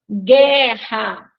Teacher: nós não escutamos o som do U